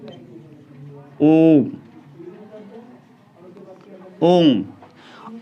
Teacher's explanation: ओ के बोलने से तिगुना समय लगता है, तिगुना। ओ को 3 बार लगभग समय के बराबर बोला जाता है, 3 बार के बराबर बोला जाता है, बराबर बोला जाता है। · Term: प्लुत स्वर